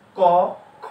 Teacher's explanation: কয়ে কম বাতাস বের হয়, ক্ষয়ে বেশি বাতাস বের হয় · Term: মহাপ্রাণ